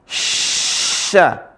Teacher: Tapi kalau yang di bawah yang ada titik tiganya, tengah lisan ketemu langit-langit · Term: huruf sya